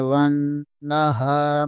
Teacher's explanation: واو زبر کو نون کے ساتھ ملانا ہے، نون مشدد ہے، یہاں پر غنہ لازمی ہوگا اور نون کو 2 بار پڑھنا ہے